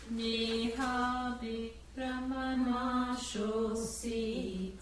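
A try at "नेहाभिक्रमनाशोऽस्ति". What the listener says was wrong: No, not nashosi. Nashosti. Neha bhikramanashosti.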